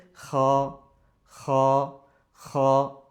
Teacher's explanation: আর কি হলকের শেষ থেকে খ